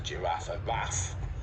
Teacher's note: little kids will often call the giraffe a raff by leaving off the unstressed syllable